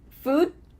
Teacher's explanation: What happens to that final D? We just cut it off.